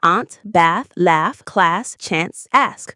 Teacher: There's also a notable vowel shift in American English, the shift from ah to a. In Britain, words like aunt, bath, laugh, class, chance, and ask are pronounced with ah. But in America, they're all pronounced with a. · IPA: /æ/ vs. /ɑː/